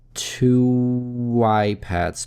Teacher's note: Two заканчивается на звук у, поэтому соединяем дальше с гласным звуком, добавляем небольшой W.